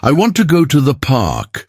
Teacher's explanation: the strong words are want and park. The small words I, to, the are softer. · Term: sentence stress